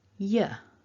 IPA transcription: ə